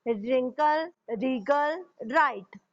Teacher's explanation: यहाँ पे आपको W का कहीं पे भी आपने उच्चारण नहीं किया है. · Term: साइलेंट